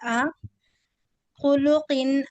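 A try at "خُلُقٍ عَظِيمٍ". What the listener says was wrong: آ نہیں، عین کو صحیح سے نکالیے، ایسا لگ رہا ہے حمزہ نکل جا رہا۔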